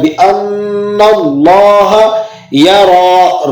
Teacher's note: را پر کھڑا زبر بھی ہے، اسے کھینچیں گے بھی اور پر کر کے بھی ادا کریں گے · لفظ اللہ سے پہلے زبر یا پیش ہو تو لفظ اللہ کو موٹا کر کے پڑھتے ہیں ، اس لیے ہم اس کو پر کر کے پڑھ رہے